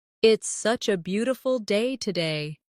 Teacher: Stress beautiful to express the feeling.